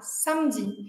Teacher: Então, aqui não é esse fecha com a boca, o lábio mais arredondado, é o A mesmo, o A aberto, né? A boca completamente a língua completamente relaxada.